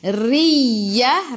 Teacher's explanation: Ra baris bawah kena senyum. Kena baca dengan nipis. Tarqiq nama dia.